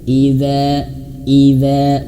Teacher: dza panjang dua harakat ya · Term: mad dua harakat